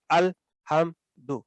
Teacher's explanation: تو آگے میم کے بعد دال ہے تو وہ بھی اظہار کے ساتھ پڑھا جائے گا الحمدو، اور دو بھی نہیں کہنا، دو بھی نہیں کہنا، اس کو دو لمبا کر کے نہیں ادا کرنا